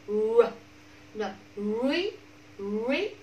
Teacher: Lưỡi cầu miệng bên ngoài, cầu miệng bên ngoài, người ta nhìn vào là như âm u vậy nhưng mà lưỡi giật lại đằng sau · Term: âm r